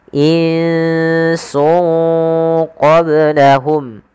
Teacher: satunya Sin dan qf maka dia harus dibaca dengan bacaan Ikhfa cara membacanya itu menyamarkan suara tanwinnya atau suara nunnya ke huruf setelahnya maka Nun yang di sini kita sambarkan ke huruf Sin sungnya